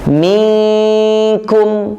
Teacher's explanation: Karena nunnya samar, tidak disebutkan nun aslinya, tidak, tapi dia samar karena bertemu dengan huruf berikutnya. Contoh, misalkan huruf nun bertemu dengan huruf kaf, minkum, nunnya tidak jelas, tidak minkum, tapi secara tulisan, secara rosab itu huruf nun, bukan huruf yang lain, dan tidak ada huruf yang lain, huruf nun. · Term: nun mukhfah